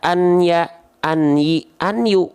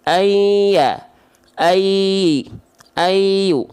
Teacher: Jadi nggak dibaca an ya, an yi, an yu, tapi ayya, ayu. Bunyi annya sudah masuk ke ya. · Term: idgham